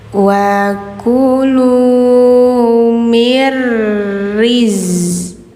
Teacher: nun ketemu ro, bacanya mir